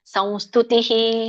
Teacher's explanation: ಸಂ ಬರುತ್ತೆ ಯಾಕಂದ್ರೆ ಮುಂದೆ ಸಾನುನಾಸಿಕ ಇದೆ